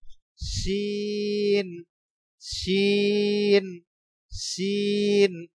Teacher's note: আলিফ পরিমাণ লম্বা করতে হবে শুরুতে শীষ দিয়ে আওয়াজ হবে শিন শিষ শীষ দিয়ে আওয়াজ হচ্ছে শিন